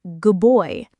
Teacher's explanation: The D sound often becomes a B sound, making it good boy.